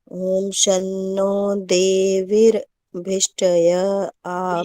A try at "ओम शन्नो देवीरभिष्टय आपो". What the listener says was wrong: देवी को लंबा करो, एक मिनट, देवी र पूरा है, ई को लंबा करोगे ना, वी को लंबा करोगे तो र पूरा आ जाएगा। एक मिनट सुन लो, देवी रभिष्टय, ऐसे, देवीर नहीं, देवी गड़बड़ हो रही है, आप देवीर बोल रहे हो ना, तो वो आधा र बन जाता है, फिर भिष्ट नहीं बोल पाते, तो देवी ई को लंबा कर देना, तो फिर र पूरा बोलो, देवी रभिष्टय।